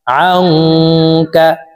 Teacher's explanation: নুন সাকিনের পরে ইকফার 15টি হরফের ভিতরে একটি হরফ কাফ আসছে, এই কারণে এই নুন সাকিনকে নাকের ভিতরে লুকাইয়া গুন্নার সহিত পড়ব। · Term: ইকফা গুন্না